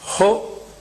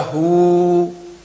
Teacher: ਹਾਹਾ ਔਂਕੜ ਛੋਟੀ ਆਵਾਜ਼, ਦੁਲੈਂਕੜੇ ਵੱਡੀ ਆਵਾਜ਼ ਕੱਢਦੇ ਨੇ